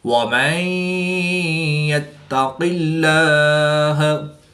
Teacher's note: نون ساکن کے بعد یا حروف ارملون میں سے ہے تو یہاں پر ادغام مع الغنہ ہوگا یعنی غنہ کر کے پڑھیں گے